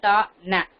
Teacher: நானுனி அன்னமும் பல்லும் பொருந்தும் இடத்தில் விரிந்து ஒற்ற பிறப்பது